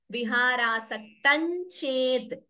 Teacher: Viharasaktam, anuswara combined by cha. Viharasaktan ched. So, note the sandhi there.